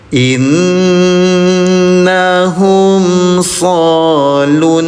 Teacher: nun bertasdid. namanya gunah dengungkan dua harakat